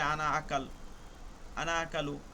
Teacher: প্রত্যেকটা শব্দের আনায় কিন্তু আমি টান দিতেছি না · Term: টান না দিয়ে